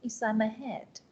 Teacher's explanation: Rồi cái từ inside inside không cần nhấn lắm nhưng mà cái head này là cái chính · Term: sentence stress